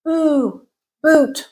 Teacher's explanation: Ooh, boot, rounded and tense.